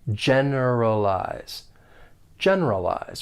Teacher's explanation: For pronunciation, there are 4 syllables. The stress is on that first syllable.